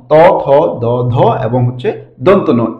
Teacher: তারপর হচ্ছে ত বর্গীয় যে পাঁচটি বর্ণ ত, থ, দ, ধ এবং হচ্ছে দন্ত ন, এই পাঁচটি বর্ণ উচ্চারিত হয় হচ্ছে দন্তমূল থেকে। এগুলো হচ্ছে আমাদের দাঁতের সাথে স্পর্শ করে উচ্চারিত হয়, যার কারণে এগুলোকে বলা হয় দন্ত বর্ণ